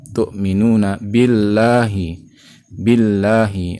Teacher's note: lafaz Allah dibaca tipis atau tarkik dikarenakan sebelumnya berharokat kasroh pada huruf ba